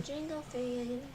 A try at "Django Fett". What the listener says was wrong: Fett. Not Django fan. Django Fett.